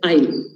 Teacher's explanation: the Kannada speakers and the Urdu speakers, because this oi is not there, they tend to say I'll.